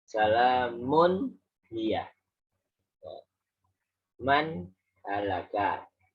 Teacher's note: Jadi nunnya bunyi, haknya juga jelas, nggak ada dengungnya.